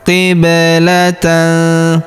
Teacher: Perhatikan huruf ba berharakat sukun. Kita pantulkan atau kita qalqalahkan.